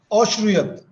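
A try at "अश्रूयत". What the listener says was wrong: Shrunoti, shruyate, ashruyata. Not halanta, ashruyata.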